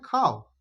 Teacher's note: এই ও টা অর্ধ উচ্চারিত হচ্ছে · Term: অর্ধস্বর